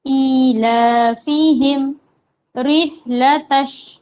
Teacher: تا کو شین سے ملانا ہے